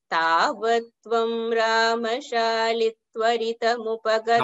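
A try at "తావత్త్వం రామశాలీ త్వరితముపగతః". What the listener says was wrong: రామశాలి దీర్ఘ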